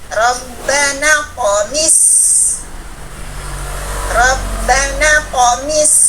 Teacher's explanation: ingat huruf sin yang punya hams, rohwa, sopir. Tingkatan sopirnya teman-teman sugro. Jadi alirkan suara napas dengan desis panjang.